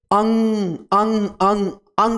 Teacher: जो वायु है वायु जो हवा है हवा हमारे नाक के माध्यम से ज्यादा निकलती है जैसे देखिए अंग अंग अंग अंग जब हम उच्चारित करते हैं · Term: नासिक वर्ण